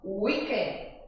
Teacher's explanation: os americanos já pronunciam weekend, já é a sílaba tônica logo na primeira